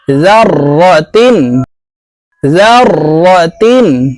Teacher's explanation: জের তিন জাররাতিন তানভীনের পরে ইজহারের হরফ খ আসছে তাই এই তাকে গুন্নাহ ছাড়া স্পষ্ট করিয়া পড়বো জাররাতিন জাররাতিন খ ইয়া জবর খাই র ইয়া দুই জবর রই